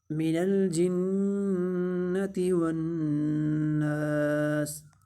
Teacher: نون الف زبر نا الف مدہ ہو رہا ہے تو اس کو ایک الف کے برابر لمبا بھی کریں گے اور سین کو ساکن کر دیں گے وقف کی صورت میں۔